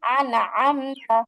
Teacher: জিহ্বার আগা বরাবর উপরের তালুর সঙ্গে লাগিয়ে নুন।